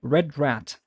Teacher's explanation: the American English has a rolled r as in your tongue rolls back a little bit